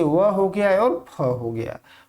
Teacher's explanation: छठा है दंत्योष्ठ, यानी ऊपर के दांत और नीचे का होठ मिलने से जिसका उच्चारण होता है उसको दंत्योष्ठ ध्वनि के नाम से जाना जाता है, जैसे व हो गया और फ हो गया।